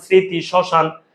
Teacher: শব্দের শুরুতে মফলার উচ্চারণ হয় না